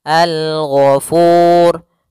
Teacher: Dan di sini ada huruf yang diwakafkan adalah huruf ra, maka kita ada tambahan hukum yaitu hukum ra tafkhim. Ra yang dia dibaca dengan tebal.